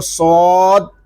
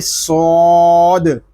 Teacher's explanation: یا صاد زبر، یا صاد حرف کو ہم مکمل ادا کریں گے، اس کو صاد اس طرح نہیں پڑھیں گے، اس کو پڑھیں گے صاد۔ یہ حروف مستعلیہ میں سے بھی ہے، اس کو ہم پر پڑھیں گے۔ اس کلمے میں صاد کے علاوہ باقی تمام حروف جو ہیں وہ باریک پڑھے جائیں گے۔